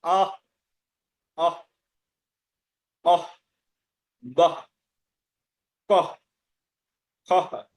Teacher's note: বিসর্গ যদি থাকে শব্দের মধ্যে তখন হয়ের উচ্চারণ আসে কিছুটা, কিন্তু একদম পুরোপুরি আহ, আহ উচ্চারণ করা যাবে না।